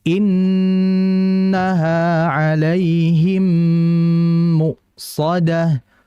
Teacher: Syekh Sulaiman mengatakan wa ghunna miman thumma nunan syuddida, dengungkanlah, tahanlah dengan dengungan pada nun syuddida